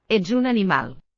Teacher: J sound like in the word edge. A voiced palatal affricate.